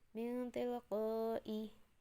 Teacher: Contoh dari ifa itu min tilqai. Jadi nun mati bertemu ta itu dibaca samar.